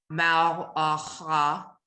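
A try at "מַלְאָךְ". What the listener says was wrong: There's a shva under the lamed, there's a shva under the chaf sofi. mal, ah. You blend into a shva. You always blend into a silent vowel. There is a silent vowel under that chaf, inside of that chaf, really.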